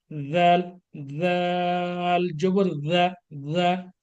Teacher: এর উচ্চারণ নরম করে, আচ্ছা হরফটাই নরম, জাল জবর জা, জা, জা, জিহ্বার আগা, সামনের উপরের আগার সাথে মিলিয়ে আমরা উচ্চারণ করব